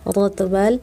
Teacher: G, bagian belakang tenggorokan, angkat pangkal lidah, G tebal.